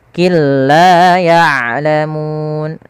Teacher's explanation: apa yang dimasukkan di sini adalah bunyi suara Nun kepada huruf laam sehingga suara nunnya hilang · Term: Idgham bilagunah